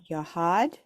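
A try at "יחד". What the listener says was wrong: Yahad, perfect.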